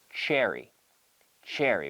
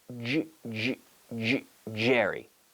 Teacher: Sound and then we activate the vocal chords and we have once I introduce the vocal cords I'm vibrating the vocal cords through that CH sound and I get a pretty good sounding J